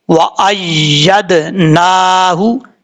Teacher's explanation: یہاں پر دال میں قلقلہ ہے، کیونکہ حروف قلقلہ جب ساکن ہو تو ان میں قلقلہ ہوتا ہے، دال یہاں ساکن ہے، قلقلہ کریں گے